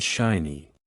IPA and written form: ˈʃaɪ.ni (Shiny)